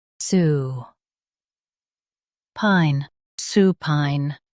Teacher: Stress su and keep pine soft.